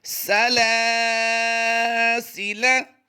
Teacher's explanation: सीन ज़बर सा इसको लंबा नहीं करेंगे, लाम खड़ी ज़बर ला को हमने लंबा करके पढ़ना है